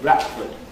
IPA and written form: ˋbrætfəd (Bradford)